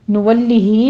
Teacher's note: نولہ میں مد صلہ صغرا ہے، یہاں پہ 2 کاؤنٹ کر لیں گے